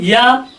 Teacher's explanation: जिह्वा ऊपर उठी, तालु के पास पहुंची, वहां का प्लेस सकरा हुआ, प्राणवायु वहां बाधित हुई